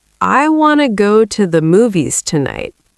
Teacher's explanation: The stressed words are want, go, and movies. The other words are reduced. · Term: rhythm